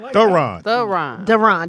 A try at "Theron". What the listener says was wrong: No, with a TH.